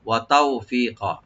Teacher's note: তাও এখানে হরফে লিন ওপেন করে পড়বেন। ওয়া তাওফি এক আলিফ টানবেন।